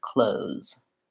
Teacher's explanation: like this clothes and that o is to sounds clothes so hold your o a little longer